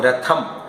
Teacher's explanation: രഥം എന്ന് പറയുമ്പോൾ നാവ് മുൻപിൽ വരുന്നു ശ്വാസം പുറത്തേക്ക് പോകുന്നു